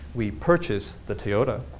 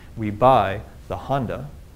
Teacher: both of these sentences take roughly the same amount of time to say, even though the bottom sentence here has fewer numbers of syllables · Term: stress units